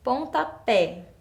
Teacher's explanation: está a minha sílaba forte nessa palavra eu tenho aí pontapé então é um som aberto mas a minha sílaba tônica tá lá no final · é um som aberto, mas a minha sílaba tônica está lá no final. Então, eu preciso colocar o acento agudo lá na última sílaba, na letra E.